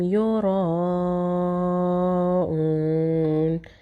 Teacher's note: یرا جو اس کا مد ہے اس کو چار الف کے برابر کھینچیں گے